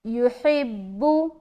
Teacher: آگے لا، الف مدہ، یا پیش یو، ہا با زیر حب، با پیش بو، یحبو، یحبو، ہا بالکل نکالیں گے سینے کی طرف سے